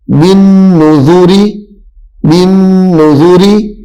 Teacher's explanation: اب اس حرف میں را باریک پڑھی جائے گی، با نون زیر بن، نون پیش نو، ذال پیش زو، بن نذو، را زیر ری۔ جب را کے نیچے زیر پڑھیں گے تو را باریک پڑھیں گے